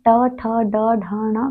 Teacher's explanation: जब हम ट ठ ड ढ ण का उच्चारण करते हैं तो वह मूर्धा से करते हैं